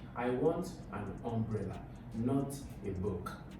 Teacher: I've put emphasis on umbrella, right? So I've put a contrast on umbrella to a book, and my emphasis is on umbrella. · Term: emphatic stress